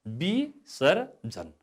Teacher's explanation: अब यसको उच्चारण, यसको शुद्ध उच्चारण विसर्जन। यहाँ व छ, तर हाम्रो उच्चारणले ब गर्छ, त्यस कारणले उच्चारणमा ब नै हुने भयो